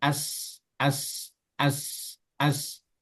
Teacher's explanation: Kalau sin ini kan dia pertama makhrajnya berada di ujung lidah menyentuh bagian bawah. Bagian bawah jadi as, as, as, as.